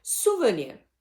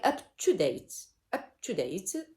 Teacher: Two unstressed syllables plus one stressed syllable. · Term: anapest